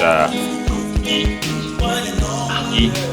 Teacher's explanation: E as in leaf, and this is the how to write it down. It is pronounced in the front part of the vowel tract, with the tongue half closed to the roof of the mouth, and the lips in a spread position.